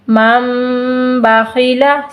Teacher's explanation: نون ساکن کے بعد اگر با آ جائے تو اس نون کو ہم نے میم سے بدل دینا ہے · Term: اقلاب